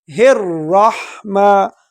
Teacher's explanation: را کو پر پڑھیں گے، موٹا پڑھیں گے کیونکہ یہ جو نا موٹے حروف میں سے ہے۔